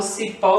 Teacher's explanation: quando eu falo cipó, chamando como se fosse uma pessoa, o que demora mais é o quê? É o pó. Então, a sílaba tônica, pó.